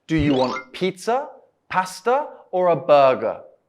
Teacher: can you hear the rising intonation for the two options pizza and pasta then the speaker's voice goes down for the last option burger · your voice will go up at the options and down at the last option in the question